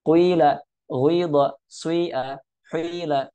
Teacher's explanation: Kita mencampurkan harokat kasrah, ya, harokat kasrah dengan dhammah ataupun dhammah dengan kasrah. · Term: ismam